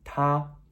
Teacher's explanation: ta. That's T-A with a high flat tone, ta.